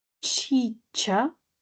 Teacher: sentimos primero cómo los articuladores producen una oclusión, pero de forma simultánea se liberan un pequeño punto donde dejan que el aire pase para producir una fricción. Entonces la fricada suele ser una combinación de la oclusión y la fricción de forma simultánea.